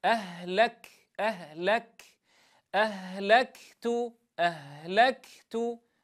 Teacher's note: لا أترك فاصلا زمنيا بين هاتين الصفتين، لأن الكاف تبدأ شديدة وتنتهي مهموسة، هما صفتان على الترتيب ولا يصح الفصل بينهما بفاصل زمني.